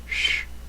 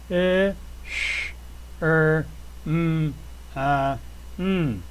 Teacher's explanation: It's a sh. Another one of those silent sounds, not in the throat, but just air escaping from your mouth.